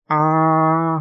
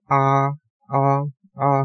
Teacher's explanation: 길게 발음할 땐 'ㅏ' 하고 입을 크게 벌려요 그런데 짧게 발음하면 'ㅏ', 'ㅏ'하고 입을 작게 벌린단 말이에요